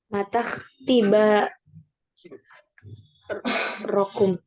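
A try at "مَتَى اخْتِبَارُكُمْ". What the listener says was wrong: Ru. Ru, nggak fathah dia ya. Ru ini.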